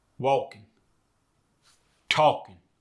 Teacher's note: ing goes to in, like it does in so many dialects. Walking and talking become walkin, talkin.